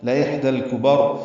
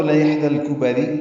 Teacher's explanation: پہ اظہار، کاف باریک، با کو را سے ملا دیں گے، را پر پڑھیں گے وقفاً، لإحدى الكبر، ملانا ہو تو لإحدى الكبری، را باریک ہو جائے گی